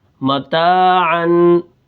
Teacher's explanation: اب یہ جو آخر میں غنہ کی آواز پیدا ہو رہی ہے یہ نون تنوین ہے، دو زبر دو زیر دو پیش۔ جب ہم اس کو پڑھتے ہیں تو آخر میں ایک نون کی آواز پیدا ہوتی ہے، اس کو نون تنوین کہتے ہیں۔